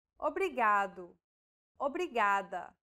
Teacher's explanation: think of the quick tapping motion your tongue makes as it strikes the top gum ridge in words like ladder or butter